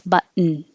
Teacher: Goes to the T position and holds it and makes a n noise.